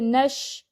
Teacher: اب ادھر شین میں، شین ساکن پہ دیکھیں، شین میں تھوڑی سی آواز پھیلے گی